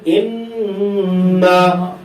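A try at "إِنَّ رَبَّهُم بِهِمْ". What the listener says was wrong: গুণনাটা একটু লম্বা করে আদায় করতে হবে।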